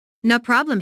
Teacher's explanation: The receptionist laughs first, then puts emphasis on no by lengthening the word